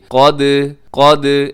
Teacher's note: قاف قلقلہ نہیں ہوگا، ویسے قاف حروف قلقلہ میں ہے، لیکن قاف اس وقت قلقلہ ہوگا جب قاف ساکن ہوگا، قاف کے اوپر جزم کی علامت ہوگی تو قاف قلقلہ ہوگا، ویسے زبر زیر پیش کی صورت میں قلقلہ نہیں ہوگا۔ لیکن دال کے اوپر جزم ہے تو دال کو تو ہم ہلا دیں گے · دال کو ہم کریں گے قلقلہ اور قاف کو ہم موٹا پڑھیں گے۔ قاف قلقلہ نہیں ہوگا، ویسے قاف حروف قلقلہ میں ہے، لیکن قاف اس وقت قلقلہ ہوگا جب قاف ساکن ہوگا، قاف کے اوپر جزم کی علامت ہوگی تو قاف قلقلہ ہوگا، ویسے زبر زیر پیش کی صورت میں قلقلہ نہیں ہوگا۔